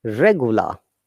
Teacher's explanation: we're pronouncing r at the beginning but we are not pronouncing that at the end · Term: non-rhotic